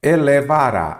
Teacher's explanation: elevará, a sílaba tônica é a última, não é isso? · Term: oxítona